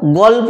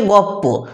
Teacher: দুটো আলাদা আলাদা ব্যঞ্জনধ্বনি জিভের উচ্চারণের কষ্ট লাঘব করার জন্য একই স্থান থেকে উচ্চারণ হয়ে যাচ্ছে, আলাদা আলাদা স্থানের উচ্চারিত স্থানের ব্যঞ্জনধ্বনি একই স্থান থেকে উচ্চারণ হয়ে যাওয়ার এই প্রবণতাকেই বলা হচ্ছে সমীভবন, যার জন্য এই ব্যঞ্জনধ্বনির পরিবর্তন ঘটে।